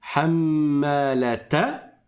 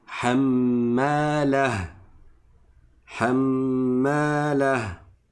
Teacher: quand je fais la liaison, je dis hammalata. Et quand je ne fais pas la liaison, je m'arrête dessus.